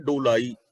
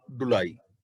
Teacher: ਮੂਲ ਸ਼ਬਦ ਹੈ ਡੋਲਾਈ ਹੂੜੇ ਨਾਲ, ਲੇਕਿਨ ਉਚਾਰਨ ਹੋਏਗਾ ਔਂਕੜ ਨਾਲ ਡੁਲਾਈ